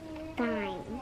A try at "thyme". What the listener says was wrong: Nope, it's pronounced thyme. The T-H. But you don't pronounce the TH in time. Time as in the plant, not a clock.